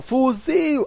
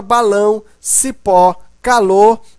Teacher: a sílaba tônica Ou seja a sílaba mais forte é a última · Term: oxítonas